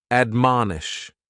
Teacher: admonish has three syllables and the stress is on that second syllable